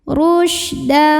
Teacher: tafasyi itu artinya menyebarkan angin di dalam mulut kita